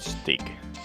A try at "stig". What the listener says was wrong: But a bit pronounce a bit longer. Stig.